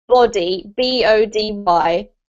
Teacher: we must put our lips together, B. We have a sound coming out of our throat, so it's vocalized, but we also release quite a bit of air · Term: B sound